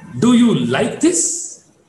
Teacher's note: The word this is to be marked with the rising tone at the bottom.